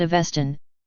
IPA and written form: əˈvɛstən (Avestan)